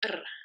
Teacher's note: okay R it's not the same r as English it's R so it's a rolled trilled sound